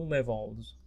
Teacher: you remember the L is voiced, consonant voiced, right? So the S, it's pronounced Z